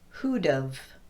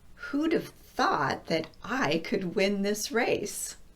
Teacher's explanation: If I want to say who would have, I'm first going to contract who would into who'd, and then I'm going to add have by just saying of.